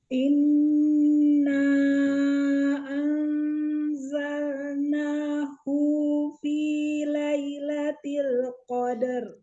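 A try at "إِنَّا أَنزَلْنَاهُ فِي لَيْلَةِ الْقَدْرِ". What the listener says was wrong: Bagus, tapi tidak dipanjangkan. Hufi, tidak. Inna anzalnahu fi lailatul qadar.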